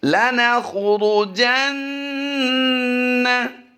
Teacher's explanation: किसी को भी हमने लंबा नहीं किया, सिर्फ गुन्ना हमने एक अलिफ खींचा है